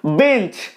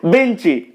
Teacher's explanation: শেষে যুক্ত ব্যঞ্জন রয়েছে উচ্চারণের কষ্ট দূর করার জন্য একটা স্বরধ্বনির আগমন ঘটছে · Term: অন্তঃস্বরাগম